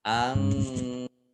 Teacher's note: Nun sukun bertemu dengan huruf fa, bacaan ikhfa dibaca samar-samar. Kemudian mim sukun bertemu dengan huruf ya, bacaan idhar syafawi dibaca jelas